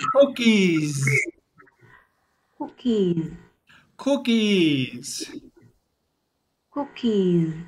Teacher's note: the s sounds like z